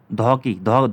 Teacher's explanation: दंत्य है, महाप्राण है और घोष है